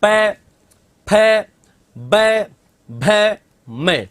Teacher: ओष मतलब जिनके उच्चारण में होठ स्पर्श होते हैं